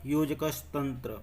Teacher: क विसर्ग के बाद त आ गया तो इसमें दंत स का प्रयोग हो गया